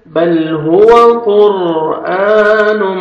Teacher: بل ہوا قر، قاف کو موٹا کر کے پڑھیں گے اور را ساکن سے پہلے ضمہ آ رہا ہے، را کو اپنے پر کرنا ہے